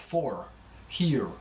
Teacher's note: And we hear, so the R go back, the tongue goes back a bit, for, here. But with a Southern drawl, it tends to be more exaggerated, like for, here. And it becomes a little more nasal on account of that.